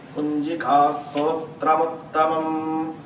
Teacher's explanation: when you say im, you will extend it a little bit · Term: dragging on the im